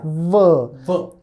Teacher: W's bite your V so V the V sound is V your lower lip is touching the upper tooth right V whereas the W sound is kissing